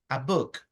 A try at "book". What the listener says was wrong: No boot. No es una T. Book.